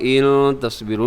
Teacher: جی یہاں دیکھیے گا بلا ان تصبروا، بلا کی پر چھوٹی مد ہے، ان تصبروا نون ساکن کے بعد تا ہے، یہاں اخفا کیجیے گا